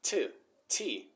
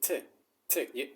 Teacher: the front edge of my tongue between my teeth